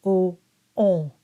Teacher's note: if you notice my lips have rounded and I do start with that o sound that I then nasalized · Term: nasalized oh, nasalized on